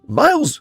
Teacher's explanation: It was a vocal fry. Miles... That's because I'm losing my voice.